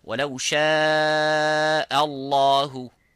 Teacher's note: both of these letters, this hamza and the ha, have to be muraqqaq, which is empty mouth. So only the lafzul jalala have to be full mouth.